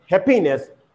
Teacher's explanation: here stress falls on the first syllable, not happiness.